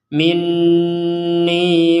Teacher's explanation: Nah, di sini nun bertasdid juga. Di sini nun bertasdid sama-sama dibaca dengung.